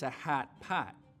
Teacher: that the light vowel which you know normally lives back here your tongue cupping low down in the back for an open ah sound moves forwards towards where trap used to be